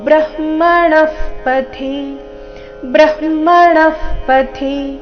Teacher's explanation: ಪಥಿ ಎರಡೂ ರಸ್ವ, ಥಿ ಇಲ್ಲಿ ಮಹಾಪ್ರಾಣ ರಸ್ವ ಬರಬೇಕು